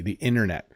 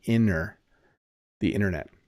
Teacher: So obviously the T at the end is hard, but the one in the middle slips to a D